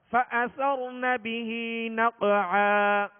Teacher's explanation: فأثر را کو پور پڑھیں گے، را ساکن سے پہلے زبر ہے